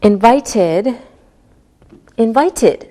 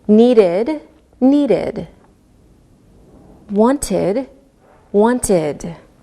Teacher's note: When the last sound of a word is a D or a T sound, we pronounce the ed like id.